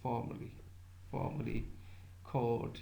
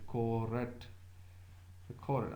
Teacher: But RP or English is, let's say, non-rhotic accent, so they do not pronounce R unless it's followed by immediately followed by a vowel. So after court, so R, there is no vowel you can say, so it's supposed not to pronounce it.